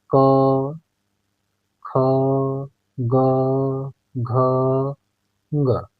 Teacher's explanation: ठीक है, तो हम लोगों ने बोला क, क का उच्चारण किया क, तो हमने देखा कि मुंह से कंठ से हवा निकल रही है, मुंह में कंठ से हवा निकल रही है, तो कंठ को छू रही है और सीधे बाहर निकल जा रही है, कहीं कहीं पे इसका टचिंग नहीं है। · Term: क वर्ग